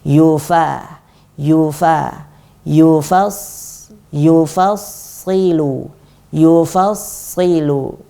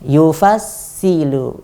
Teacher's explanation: Yang benar fa-nya tipis, shadnya tebal. Intinya ketika ada huruf tebal dan huruf tipis, maka kita harus berhati-hati agar huruf tipis tetap tipis, huruf tebal tetap tebal.